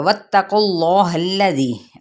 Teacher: इसमें जलाला का लाम पुर पड़ा जाएगा क्योंकि पीछे पेश है। अब इस हा की ज़बर को लाम के साथ मिलाएंगे। · वाव की ज़बर को ता के साथ, ता की हरकत को लंबा नहीं करेंगे